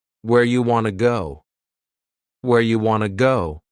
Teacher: You becomes ya and want to becomes wanna. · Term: reduction